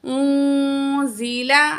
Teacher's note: वमा उन्ज़िला, नून साकिन के बाद जा है, हरूफ इख्फा में से नून की आवाज़ को हम क्या करेंगे, नाक में छुपा के पढ़ेंगे